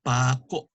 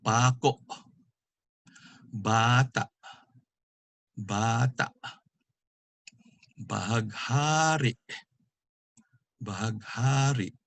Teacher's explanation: And just like malumay, the accent is on the second to the last syllable, but it has a glottal stop, a catch in the throat